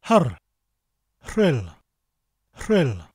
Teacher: So we take a little of that sound, not too much, just a rrr, and we say a h sound from the back of our throat before the rrr.